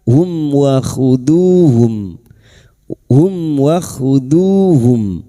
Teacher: Mim sukun bertemu wawu idhar syafawi. Mim sukun dibaca jelas tanpa mendengung. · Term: izhar syafawi